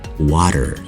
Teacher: or two letter T's in the the middle of a word instead of saying the hard T sound for those letters we instead pronounce the flap T